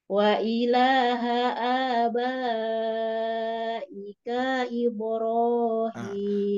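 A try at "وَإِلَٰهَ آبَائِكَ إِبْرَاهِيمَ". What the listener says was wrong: K-nya kepanjangan, Bu. Ika, tapi i.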